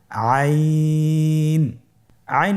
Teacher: হরফটি কন্ঠনালীর মধ্যখান থেকে উচ্চারিত হয়